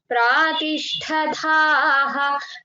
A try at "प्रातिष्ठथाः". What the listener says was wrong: था था बहुत महाप्राण प्रातिष्ठथाः